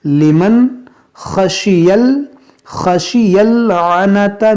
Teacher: یہاں پر دیکھیں یہ ذال ہے, ذالکا لمن, یہ نون ساکن کے بعد خا حروف حلقی ہے, تو یہاں پر ہم اظہار کریں گے